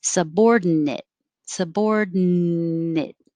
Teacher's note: the d din subordinate or make it a little shorter and not make a clear d just hold your tongue in the end position